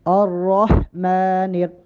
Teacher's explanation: الرح میں ہا کی آواز واضح ہو۔ الرحمن، میم پہ کھڑا زبر ہے، میم کو ایک الف کے برابر کم از کم لمبا کر کے پڑھیں۔